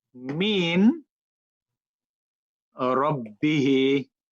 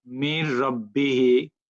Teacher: Idgham means absence of noon.